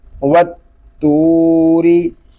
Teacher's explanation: را اس لیے باریک ہے کہ را کے نیچے زیر آ گیا ہے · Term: را باریک